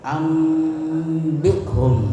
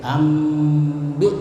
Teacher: dengan menyuarakan nun sukun atau tanwin ee menjadi suara mim jadi nunnya itu ditutup mulutnya seperti membaca mim ee sukun ya dan dengan merapatkan bibir serta mendengung ya jadi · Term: iqlab